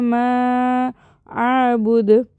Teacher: தாலை கல்கலா பண்ணி பவுன்ஸ் பண்ணி ஓதணும்